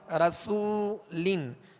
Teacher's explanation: را پر زبر ہے لہذا را کو پر پڑھیں گے, اور آگے وہ مدہ ہے رسو, سین کو سیٹی کی آواز میں پڑھیں گے مگر باریک. رسولن, سین پر پیش بھی ہے لہذا ہونٹوں کو کامل گول کر کے ادا کریں گے.